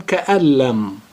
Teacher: the noon is gray, which means that it is silent. So we join both words and they become ka'allam